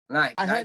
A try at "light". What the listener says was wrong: I heard as night. Say light. I know, but say the word light.